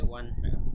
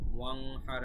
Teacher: নুন সাকিনের পরে হা এসেছে, এই জন্য কিন্তু কোনো গুন্না হয়নি।